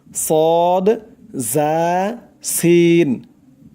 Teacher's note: জিহ্বার আগা সামনের নিচের 2 দাঁতের পেট ও আগার সঙ্গে লাগাইয়া উচ্চারণ হয় 3টি অক্ষর সদ জা সিন, 3টি অক্ষর শীষ দিয়ে উচ্চারণ হবে সদ জা সিন।